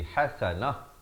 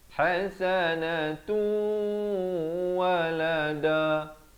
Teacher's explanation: bila waqaf ta marbutah diberikan tanda mati mendatang dan ditukarkan kepada bunyi ha